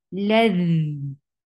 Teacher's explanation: Dhal will get rukhawa. Rukhawa is a flow of sound. So you should be, you should create a sound, flow of sound over here.